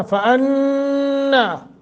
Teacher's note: یہاں نون مشدد ہے، غنہ کر کے پڑھیں گے